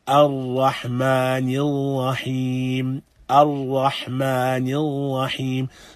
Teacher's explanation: The recitation of Ra, though there is something of repetition, but it should only occur once.